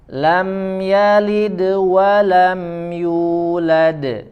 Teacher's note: terakhir huruf Dal dibaca Qalqalah yang memantul